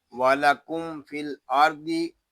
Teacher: یہاں میم ساکن میں اظہار شفوی ہوگا